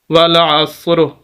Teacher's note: لفظ ہمارا ہوگا والعصر۔ وقف کرنا چاہیں تو آخری حرف را ہے، ہم اس کو ساکن کر دیں گے، جیسے ہم اس کو ساکن کریں گے ہمارا لفظ ہوگا والعصر، جیسے سورہ عصر ہے اس کی پہلی آیت بھی ایسے ہی ہے، والعصر۔